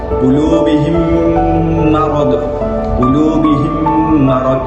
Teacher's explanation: Mim itu bertemu dengan huruf mim dan bacaannya adalah dengan memasukkan huruf mim itu secara gunnah selama 2 harakat. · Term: idgham mislain